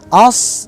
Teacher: Dan makhraj sod adalah tarful lisan, ujung lidah, ma'a ma baina tsanayal ulya wa sufla, ujung lidah dan antara gigi atas dan gigi bawah, di tengah-tengah